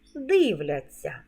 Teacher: порада мудроїсовий у дієсловах на ця завжди пишемо знак м'якшення і вимовляємо ться як ця м'який подовжений звук